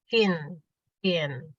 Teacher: Tafashi itu menyebar aliran udara dari tengah lidah ke ujung mulut ketika mengucapkan huruf shin.